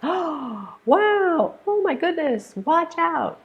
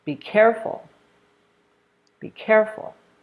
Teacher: exclamations use a falling tone as well